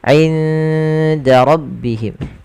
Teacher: Ikhfa'nya samarkan nunnya ke huruf dal. Awalnya inda, tapi dia ketika ketemu dal inda langsung ke huruf dalnya.